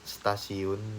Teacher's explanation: stasiun bunyi T itu dilafazkan sebagai bunyi T lamina lamino alveolar perubahan bunyi hambat apiko alveolar huruf T menjadi bunyi hambat lamino alveolar karena pengaruh secara progresif dari bunyi geseran lamino palatal lamino palatal